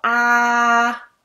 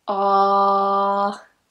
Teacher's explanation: You drop your jaw slightly. So it's not a very open, wide sound like a, as in apple, but it's a little bit more closed. Not ooh, not that closed, but a little bit more relaxed than an a. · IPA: /ɑː/